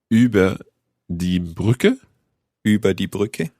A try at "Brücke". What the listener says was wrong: Über die Brücke. Be careful. It's the Ü sound. It's Brücke, not Brücke. Yeah, you have to pay attention at the Ü sound.